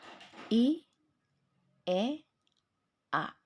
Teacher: di situ bisa kalian rasakan terjadi perpindahan posisi lidah dari mulai tinggi ke menengah dan ke bawah. High, center atau intermediate, dan low.